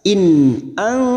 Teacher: In ang, nun sukun bertemu ta ikhfa hakiki, kita samarkan bunyi nun sukun dan mendengung selama 3 harokat